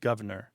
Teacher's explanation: you hear governor with that first R dropped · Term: dissimilation